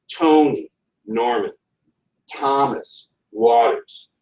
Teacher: pairing of syllables where the first is stressed the second is unstressed